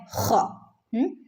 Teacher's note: തൊണ്ടയുടെ മുകൾ ഭാഗത്തു നിന്ന് വരുന്ന ലെറ്ററാണ് ഖ